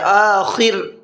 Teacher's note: خا کو پر کر کے پڑھنا ہے اور را کو باریک کر کے پڑھنا ہے